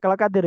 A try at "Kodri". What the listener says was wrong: saya Kodri, Zat, pakai ko, insya Allah.